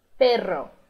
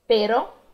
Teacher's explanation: uma palavra em espanhol que tem dois R's, ela vai ter a língua vibrando por mais tempo do que quando tem um R só.